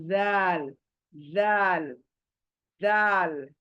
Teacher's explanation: जबान चौड़ी होकर थोड़ी बाहर आएगी मुंह से, और ऊपर के दांत कट करेगी जबान को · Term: जाल